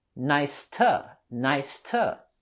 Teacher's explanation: the word to, we can use a more reduced form and say t.